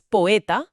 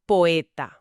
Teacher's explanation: Y esa esa es la opuesta a la diéresis. Une en una sílaba métrica dos vocales que normalmente estarían en sílabas separadas, o sea, que formarían unato. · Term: sinéresis